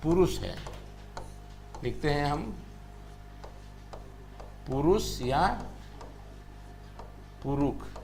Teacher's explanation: मूरधन्य श का उच्चारण जो है हमारे यहां वो श की तरह होता है और ख की तरह होता है